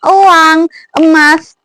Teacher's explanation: posisi lidahnya madya atas, terus menggunakan lidah bagian tengah, dan posisi mulutnya di sini semi tertutup.